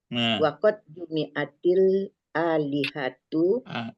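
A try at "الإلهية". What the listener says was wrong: Jangan alih, sudah ada hamzah. Kan ada hamzah di bawahnya itu, di pandunya.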